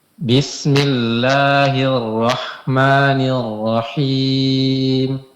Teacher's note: Kemudian huruf ro ditebalkan.